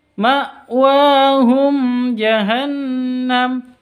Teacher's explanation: mim mati bertemu dengan Jim cara bacanya jelas tanpa dengung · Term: izhar syafawi